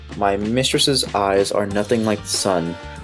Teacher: you're going from the unstressed of my to the stressed of mist in the beginning of mistress. And then tress is then stressed, and then eyes is stressed.